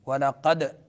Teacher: دال ساکن ہے تو قلقلہ ہوگا، 5 حروف ہے قلقلے کے، قطب جد پانچوں یہاں اس لفظ میں ہے، قاف طا با جیم دال، قطب جد، دال میں قلقلہ ہوگا۔